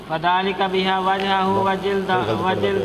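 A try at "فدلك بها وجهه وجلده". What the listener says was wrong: فذالک پڑھ جاندے کیڑا نقطہ لانا ہے انہیں دسو نا ذرا.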